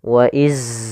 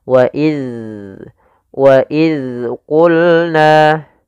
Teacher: Bagaimana melafalkan huruf dalal yang baik yaitu ujung lidah kita harus kita tempelkan dengan gigi seri atas kita